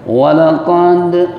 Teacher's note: qalqalah sugro karena dal sukun berada di tengah kalimat